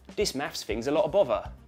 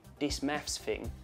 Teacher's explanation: notice the th at the beginning of the word this has changed to a d